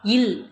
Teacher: மேல்வாய் பல்லின் அடியை நாக்கின் ஓரங்கள் தடித்து நெருங்குவதால் பிறக்குது. இல் மேல்வாயை நாக்கின் ஓரங்கள் தடித்து தடவுவதால் பிறக்கிறது.